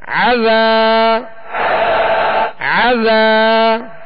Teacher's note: ایک الف کی مقدار کھینچیں گے، یہاں الف مدہ ہے، عذا، عین کو درمیان حلق سے ادا کرنا ہے تاکہ حمزہ کی آواز اس میں پیدا نہ ہو